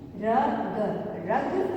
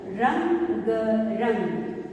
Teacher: अंग की मात्रा के उच्चारण में हमारे मुंह और नाक दोनों से ध्वनि सुनाई देती है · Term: अनुस्वार